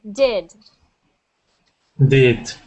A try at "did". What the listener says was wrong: I'm hearing dided that looks like that on the chat I'm hearing de I want to hear did with an e sound